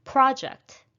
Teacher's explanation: project is a noun so we're stressing the first syllable